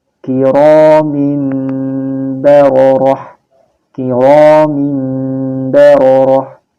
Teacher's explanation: menjadi suara mim dengan merapatkan kedua bibir serta mendengung